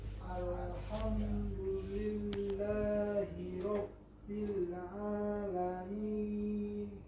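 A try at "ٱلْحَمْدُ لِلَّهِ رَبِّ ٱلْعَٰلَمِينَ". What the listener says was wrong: Nun itu Rabbil Nah, cukup ya. Jangan ada angin di ujung lagi. Rabbil, dan itu ada riwayat lain bukan riwayat kita. Ada riwayat macam seperti ini. Wajah cara bacanya. Alhamdulillahi rabbil alamin. Itu ada riwayat lain bukan riwayat kita.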